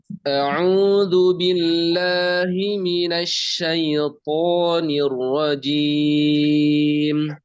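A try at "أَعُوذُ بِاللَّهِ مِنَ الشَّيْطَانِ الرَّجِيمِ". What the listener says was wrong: Tipis roknya. Tipis lagi. Tebal Afan. Ulangi, coba ulangi.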